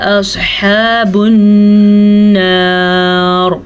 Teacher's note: اور را کو پر بھی پڑھنا ہے. ہم یہاں پہ رک رہے ہیں اس لیے ہم را کو پر پڑھیں گے